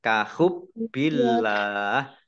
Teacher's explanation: Baknya kahub bi, baknya dibaca double ya, kahub billah. Allahnya dibaca tipis karena harokat di depannya kasroh.